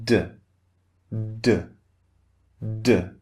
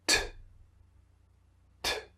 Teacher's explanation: You can just feel a little bit of air on your hand. But if you try the second sound, T, T, there's much more air. Okay, so the second sound, the unvoiced, is more forceful.